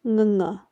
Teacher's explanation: it's pronounced using the back of your tongue against the back of your mouth, the top of your mouth.